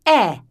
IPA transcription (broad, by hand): eə